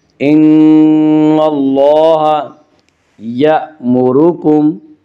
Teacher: حمزہ کو جھٹکے سے پڑھیں گے